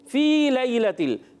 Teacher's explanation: لام کو ہلانا نہیں، کھڑی حرکات کو ایک الف کھینچیں گے. فی لیلۃ، فی کو ایک الف کھینچنا ہے کہ حرف مدہ ہے